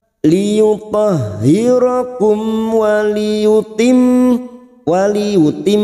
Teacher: mim yang bertasdid gunna musaddada kita dengungkan selama 3 harakat